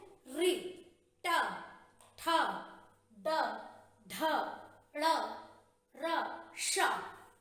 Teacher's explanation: इनके उच्चारण में हमारी जीभ तालु से, मूर्धा से टकराती है, इसलिए ये सारे मूर्धन्य हमारे वर्ण हैं।